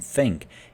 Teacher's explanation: with think, the th, as in think, it's unvoiced.